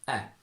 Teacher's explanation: whilst in modern RP we open the sound a lot and we say E